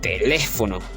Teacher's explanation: Lleva la fuerza de voz, el acento en la antepenúltima sílaba, en le. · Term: esdrújula